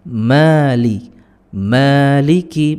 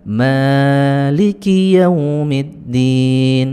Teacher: Maliki itu cukup dua harokat atau satu ayunan atau satu ketukan.